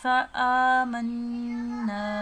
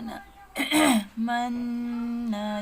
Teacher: نون مشدد کا غنہ کرنا ہے، ایک الف کے برابر ناک میں آواز لے کر جانی ہے